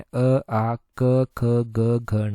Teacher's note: कंठ की अगर हम बात करें तो इसमें अ आ क ख ग घ ण आते हैं